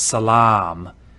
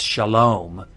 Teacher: And that long ah in Arabic is now an O in Hebrew.